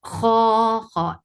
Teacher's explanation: Kho is heavy, make it 2 counts long.